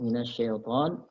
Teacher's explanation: Kemudian minasyaiton, alif lam syamsiyah, minasyaiton, ta-nya panjang, 2 harokat mad tabi'i